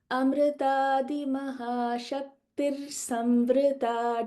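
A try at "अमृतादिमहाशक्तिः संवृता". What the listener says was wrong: So there is no refa after Shakti. Amrutadi Mahashakti Samrita Dakinishwari.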